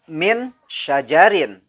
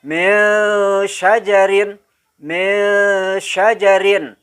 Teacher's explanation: Nah, jadi enggak persis ming, tetapi samar antara bunyi nun mati dengan shin. Jadi kedengarannya seolah-olah seperti eng, tapi samar, ya. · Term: ikhfa